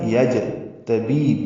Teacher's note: اللہ یجتبی، لام کو 2 حرکات لمبا بھی کریں گے. جیم ساکن پہ قلقلہ ہے